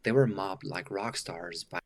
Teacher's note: I'm not hearing the duh. I'm kind of hearing mob.